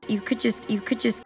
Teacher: we have the sounds D from could and J from just blending together and the T at the end of just is dropped